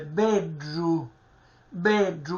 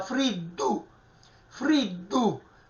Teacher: la D cacuminale, ripeto, cacuminale dal greco significa retroflessione della lingua sul palato superiore, e viene questo suono strisciante, bedru, bedru, che si avvicina allo stesso, diciamo, alla stessa pronuncia di DR, ma la R ortograficamente non si scrive, bedru, quindi non si può pronunciare beddu.